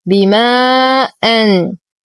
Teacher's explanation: لدينا حرف مد وبعده همز في كلمتين فالمد جائز منفصل يمد بمقدار 4 إلى 5 حركات